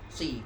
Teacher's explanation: Akan tetapi ketika huruf tafkhim itu harokat kasroh, maka cara bacaannya itu syabihan bil muraqqaq. Syabihan bil muraqqaq artinya bacaannya sama dengan huruf yang tarqiq bacaannya.